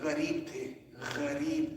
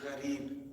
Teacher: So ghayn does not come from the mouth. A lot of people in Punjabi will say, for example, or in Urdu, wo ghareeb the. So when you say ghareeb, we use it from the middle of the tongue.